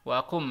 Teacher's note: Ini nunnya enggak dibaca langsung masuk ke mim disebut idgham bi gunnah